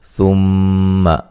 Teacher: میم مشدد پہ غنہ ضروری ہے